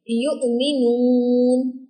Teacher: हमज़ा साकिन जहाँ पर भी आए तो हम इसको झटका देंगे। याए मज़मूम के डायरेक्ट आगे वाव तो है लेकिन वाव पर जज़म नहीं है, वाव साकिना नहीं है, हमज़ा साकिन है। · याए मज़मूम है और आगे वाव भी है, लेकिन हमने इसको झटका देकर पढ़ा है